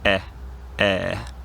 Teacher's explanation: If you listen carefully, the only difference is how long you hold the E sound. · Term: vowel length